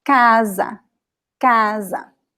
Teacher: There is no accent, but you know the stress is in the first syllable because it's the second to last